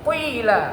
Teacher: huruf isti'la ini sekalipun berharokat kasrah harus ada sifat tebalnya. Itu yang disebut tafkhim nisbi.